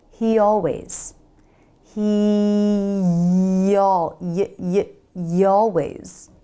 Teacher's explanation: it helps to put a Y sound in between the words